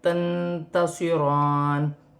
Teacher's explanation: ساکن میں اخفا ہوگا کیونکہ تا حرف اخفا میں سے ہے، صاد سٹی والا موٹا حرف ہے